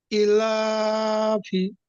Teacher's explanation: লামের ওপর খাড়া জবর আছে, এটি আলিফ মাদ্দার সমান, এটিকে সবসময় একালি পরিমাণ টান দিয়ে পড়তে হবে। ফার নিচে জের আছে, এটি হলো হারাকাত, হারাকাতের পড়া তাড়াতাড়ি পড়তে হয়, টান দেওয়া নিষেধ, যেমন ইলাফি।